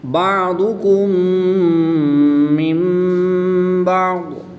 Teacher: میم ساکن کے بعد دوسری میم ہے تو یہاں پر ادغام شفوی ہوگا، غنہ کر کے پڑھیں گے۔ · نون ساکن کے بعد حرف با ہے تو نون ساکن کو میم سے بدل کر یہاں پر غنہ زمانی کریں گے